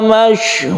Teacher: Jangan lupa qalqalahnya kita sebut kalau di akhir ayat itu qalqalah kubra.